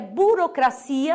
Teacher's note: sílaba tônica em português é a última